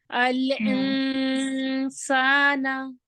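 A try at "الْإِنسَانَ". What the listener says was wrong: देखिए हमजा में आइन आ रहा है, अल इन, ऐसा क्यों? थोड़ा हिल रहा है आपका इक्फा, इसको इजी वे में करना है।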